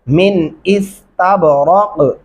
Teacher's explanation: यहाँ पे गुन्ना नहीं होगा इस नून के ऊपर। मिन इस्तबरक, तब यहाँ पे कलकला करेंगे, रा को मोटा पढ़ेंगे, और कॉफ यहाँ पे भी मिन इस्तबरक, रक ये कलकला हो गया।